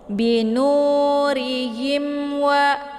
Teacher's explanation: Ketika mim sukun bertemu dengan salah satu huruf hijaiyah yang selain ba dan mim, maka itu dinamakan dengan izhar syafawi. Jadi cara bacanya itu bunyi mimnya itu jelas. Jadi cukup ditekan ha-nya langsung masuk ke huruf waw.